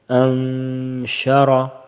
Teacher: زبر ان، ابھی دیکھیے شین زبر شا، انشا، را زبر را، را کے اوپر زبر ہے، اس کو موٹا پڑیں گے